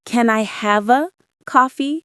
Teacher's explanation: Notice how have and uh blend together. >> Yeah, it's smoother and faster. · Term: connect the words